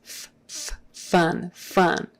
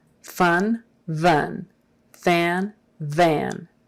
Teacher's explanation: v is just a voiced f right f is this f f fun fun v is f with your voice turned on